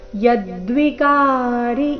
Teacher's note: ಯದ್ವಿಕಾರಿ ಈ ಶಬ್ದದಲ್ಲಿ ಕ ಮಾತ್ರ ದೀರ್ಘ, ಯ ಮೇಲೆ ಆಘಾತ.